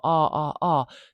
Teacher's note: this is a low back vowel